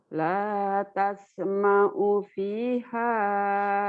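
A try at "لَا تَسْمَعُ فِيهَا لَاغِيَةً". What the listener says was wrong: fi-nya panjang. La tasma'u fiha laghiyah. La tasma'u fiha laghiyah.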